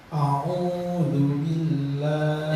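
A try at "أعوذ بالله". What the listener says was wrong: Jangan tiru irama tadi salah ya. Ya, irama yang tadi itu salah. A'udzu billahi itu nanti kata salah. Irama itu biasa baca. Itu pengaruh pula irama yang salah.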